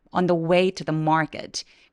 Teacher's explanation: 강세 뒤에 오는 크 소리들은 조금 된 소리를 내면서 소리를 죽여 주세요